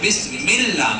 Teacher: لفظ اللہ سے پہلے اگر زیر آ جائے، جیسے بسم اللہ، میم پر زیر ہے، اس کے بعد لفظ اللہ ہے، تو لام اللہ ہمیشہ باریک ہوتا ہے